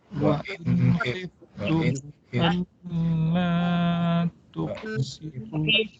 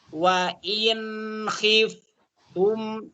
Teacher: Jadi in lidah ke gusi atas, gerahamnya ini turun ke bawah. Posisi gigi ini terbuka. Wa in ada jarak gigi atas, gigi bawah.